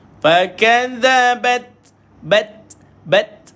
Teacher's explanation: keluarkan T, matikan pada T dulu baru keluar angin.